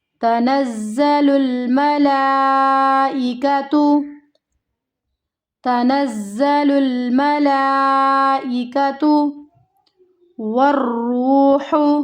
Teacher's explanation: مد والے حرف کے بعد حمزہ اپنی اصلی حالت میں ہے، یعنی کہ اپنی اصلی شکل میں ہے، مد متصل ہے، اسے ہمیں کھینچنا ہے 5 الف کے مقدار کے برابر